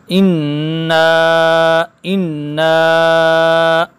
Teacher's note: نون چونکہ مشددہ ہے نون پر غنہ ہوگا اور اس پر مد بھی ہے